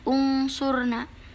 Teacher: Contohnya di sini yang pertama ada unsurna, yaitu nun mati bertemu dengan huruf shad. Jadi dibacanya agak mendengung atau berbunyi huruf eng